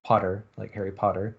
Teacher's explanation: uh back rounded vowels in in southern british english and so they have this sort of back low back rounded vowel